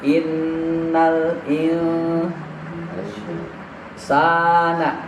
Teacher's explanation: sa-nya panjang 2 harokat mad tabi'i ya